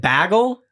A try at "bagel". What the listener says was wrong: you say it with like an e almost like Bagel